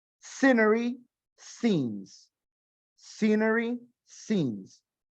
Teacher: Esa SC en escenario o en escenas solamente suena scenery, scenes. No le vamos a poner una E por delante.